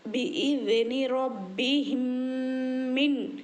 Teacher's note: یہاں پر میم ساکن کے بعد میم آیا ہے تو ادغام شفی میں ہے، اور ادغام شفی میں 3واں قاعدہ ہے۔ میم ساکن کے بعد میم آنے پر اس کو گنے کے ساتھ پڑھیں گے